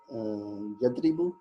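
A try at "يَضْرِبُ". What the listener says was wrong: وہ تو یا یدریبو کا تو یا کے اوپر زبر آنی چاہیے. یہاں پہ پیش کب آئی تھی زندگی میں؟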